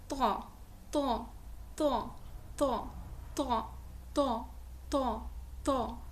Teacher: موٹا ادا ہوگا، مفخم ادا ہوگا